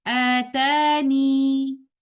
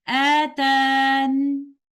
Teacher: The second way is dropping the letter ya and stopping with a sukoon on letter noon